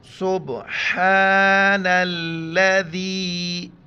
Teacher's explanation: نون کو لام کے ساتھ ملائیں گے